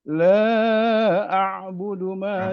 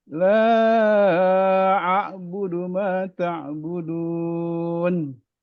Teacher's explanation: La-nya kurang Pak, la-nya kurang. 4 harakat.